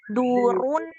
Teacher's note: Huruf dal itu bukan di langit-langit atas, tapi di tempat tumbuhnya gigi. Jadi bukan seperti huruf D.